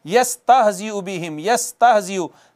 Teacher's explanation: या हरूफ शजरिया में से है, वस्ते ज़बान और ऊपर का तालु मिले तो।